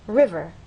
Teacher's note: understand that the first syllable is stressed